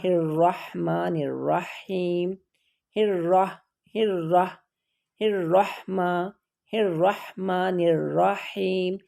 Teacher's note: را کے اوپر شد ہے اور اس کے اوپر زبر ہے تو وہ دونوں را موٹی پڑھی جائیں گی۔ جب را کے اوپر شد ہو اور اس کے اوپر جو حرکت ہو را اسی کے اکارڈنگ پڑھی جاتی ہے۔